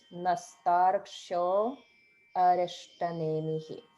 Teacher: notice the small gap between the O and then arishta.